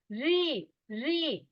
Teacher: হ্যাঁ, আপনি আঙ্গুল দিবেন দাঁতের পরের অংশ, দাঁতের গোড়া আছে না, গোড়ায় হাত দেন, দিয়ে তার এই সাইডে চলে ভেতরের দিকে চলে যাবেন, ওপরের তালু শক্ত সেখানে ঠেকবে, দেখবেন রি রি। জিহ্বার আগাটা দেখবেন একটু উল্টাবে, অল্প একটু আগাটা দিয়ে ছাড়া আপনি ওই জিহ্বাটাকে উল্টায় আপনি রি উচ্চারণ করেন, আপনার পক্ষে সম্ভব হবে না। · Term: মূর্ধন্য